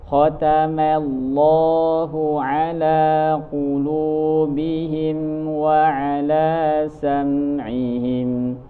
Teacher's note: huruf lam di lafzul jalalah yang sebelumnya fathah atau dhamma itu dibaca tabkhim atau tebal.